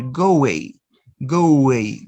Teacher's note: Notice you are inserting the consonant wa.